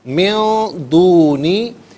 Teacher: نون ساکن کو اخفا کے ساتھ پڑھیں گے، یعنی ناک میں آواز لے جا کر گنگنانا